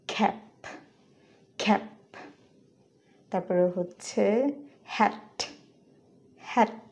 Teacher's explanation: ফ, ঠ, খ যদি একদম লাস্টে ব্যবহৃত হয়, তারপরেও কিছুটা অ্যাসপিরেটেড হবে, মানে ফুললি অ্যাসপিরেটেড না, তবে অনেকটা অ্যাসপিরেটেড ওয়েতে উচ্চারিত হবে। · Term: slight aspiration